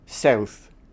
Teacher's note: We're going to move to one particular city in the world, Philadelphia, on the east coast of America, where one small, tiny, little thing changed. People started pronouncing the vowel ow in south more in the front of their mouth.